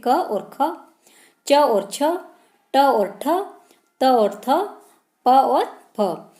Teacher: जिन ध्वनियों के उच्चारण में उच्चारण तंत्र कंपित न हो, वो आपके अघोष वर्ण कहलाते हैं